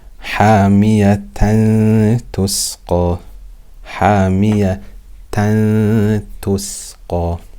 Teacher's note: So we have to do ikhfa. We will hide the noon sound on the tanween with ghunna for 2 harakat.